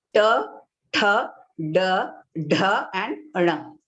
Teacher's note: Now here, to get the pronunciation of this group of consonants, we have to slightly curl the tip of your tongue a bit backwards, and then it touches your hard palate, Murdha.